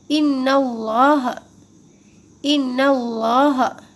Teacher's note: اِنَّ اللَّهَ، اِنَّ اللَّهَ، پھر سے دیکھیے اللہ کا یہ جو لام ہے اس سے پہلے یہاں پہ زبر آ گیا، تو اللہ کے لام سے پہلے زبر ہو تو اللہ کا جو لام ہے وہ موٹا پڑھا جاتا ہے، تو یہاں ہم اللہ کے لام کو موٹا پڑھیں گے.